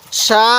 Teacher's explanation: সিনের মধ্যে আমরা চার আলিফ টান দিব